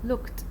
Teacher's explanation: we have one stop consonant followed immediately by another stop consonant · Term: stop stop